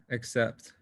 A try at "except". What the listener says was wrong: Except. What's the difference between this A and this A? The sound. Did you feel any change in the sound? Father. A. This one is heavier. So the same thing you need to apply on these letters. When you're pronouncing them, there is a slight difference. Except is light. It is very light. Whereas this has been pronounced heavily.